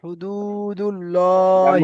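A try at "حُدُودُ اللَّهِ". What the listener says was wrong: হুদু টান করতে হবে, বুঝতে পেরেছেন, ও মাদ্দা।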